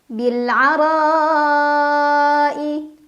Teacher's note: huruf qamariah yaitu Ain cara bacanya alif lam dibaca jelas bilar ro dibaca secara tafkhim karena ro berbaris fathah jadi bacanya tebal